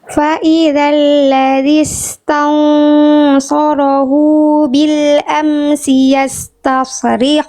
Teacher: Jadi jangan sampai cuma dibaca faidzalladzistan tapi faidzalladzistansu. Jadi ikhfanya tebal ikhfa hakikinya tebal ketika samar dan dengung ya diangkat pangkal lidahnya